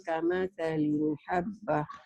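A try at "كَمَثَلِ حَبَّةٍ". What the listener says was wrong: Jangan kamasali, nggak ada linnya. Kamasali habbatin. Kamasali habbatin Memang baca di sini kalau cepat-cepat kesandung, agak tenang di sini.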